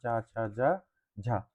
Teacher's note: हिंदी की तालव्य ध्वनियां जो तालु से बोली जाती है, तालु से बोली जाने वाली होगी चा वर्ग।